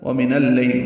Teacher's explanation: وَمِنَ اللَّيْلِ، وَمِن اور اللَّيْل ملا دیے، وَمِنَ اللَّيْل نون کو لام سے ملانا ہے، اس کو لیل نہیں پڑھنا ہے، لیل پڑھنا ہے۔